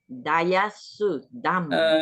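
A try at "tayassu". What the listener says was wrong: No D. Only T. No D here. Tayasu. Tayasu. Difference is no D here. No D. Only T. Tayasu.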